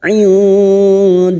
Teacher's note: lam jalalah yang didahului fathah, kita baca tafkim